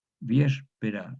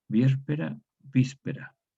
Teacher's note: acá en España es una ápico alveolar, se pronuncia con el ápice de la lengua, no con el dorso